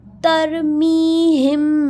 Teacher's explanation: میم ساکین جب بھی ہوتا ہے تو ہم سم ٹائمز غنہ کرتے ہیں، لیکن یہاں پہ دیکھیں میم ساکین ہو اور اس کے بعد والا لیٹر اگر ایک اور میم آ جائے یا پھر با آ جائے تو ہم میم ساکین کی آواز کو ناک میں ایک الف برابر غنہ کرتے ہیں